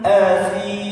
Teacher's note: Tulisannya kalau dilatinkan TSI, si atau TSA kalau dia harokat kasrah, fathah, sa. Bukan asim, tapi pakai ujung lidahnya itu digigit Pak